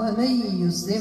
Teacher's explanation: ذهبت الذات وبقيت صفه الغنه ذات نون فهي دخلت في الياء ولكن قد الصفه ديالها هي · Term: ادغام